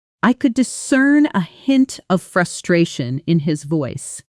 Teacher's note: Notice how discern and a blend together, the sound almost disappearing into the next word.